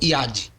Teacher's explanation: como iate simplificando ela é lida como iade e significa mão o de final Deve ser duro e não como EAD